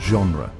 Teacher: In French, G often takes on a soft, almost ZH sound, as in the word genre.